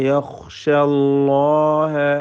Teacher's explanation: അതുപോലെ അല്ലാഹ എന്ന ഇസ്മുൽ ജലാലയിലെ ലാമിനെയും തഫ്ഖീമാണ് ചെയ്യേണ്ടത്. ലാമിനും അതിൻ്റെ ദീർഘാക്ഷരമായ അലിഫിനും തടിപ്പിച്ചുകൊണ്ട് തഫ്ഖീം നൽകി ഉച്ചരിക്കുക